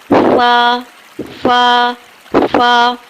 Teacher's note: اب اوپر والے سامنے کے 2 دانت، ان کا کنارہ ہم نیچے والے ہونٹ کے گیلے حصے سے ٹچ کر لیں. پہلے ٹچ کرنے کے بعد پھر بولیں فا فا فا.